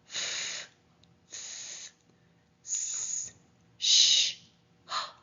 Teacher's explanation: the unvoiced fricatives are f s sh H